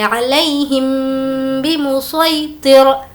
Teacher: ہمیں یہاں پر غنہ کرنا ہے، وہ اس وجہ سے کہ میم ساکن کے بعد با ہے تو ہم غنہ کریں گے